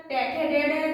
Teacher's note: मूर्धा से बोले जाते हैं। और इनकी नाम ध्वनि है मूर्धन्य।